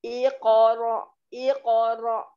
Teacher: qalqalah sugro ya, kecil posisi dia di tengah terus kemudian dia bertanda sukun